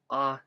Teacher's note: Next is what we call a glottal stop. It's pronounced by closing off the glottis. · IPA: ʔa